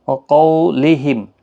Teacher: قاف حروف مستعلیہ ہے، پر پڑھا جائے گا